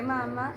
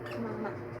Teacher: En este caso del texto extraímos la palabra mama, en donde el hablante no acentuó la última A de la palabra, por lo cual la pronunciación cambia y dice mama en vez de, como sería correctamente, la palabra mamá.